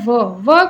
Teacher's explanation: व का उच्चारण करते हैं तो दांत और होठ दोनों की सहायता लेनी पड़ती है। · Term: दंत्योष्ठ वर्ण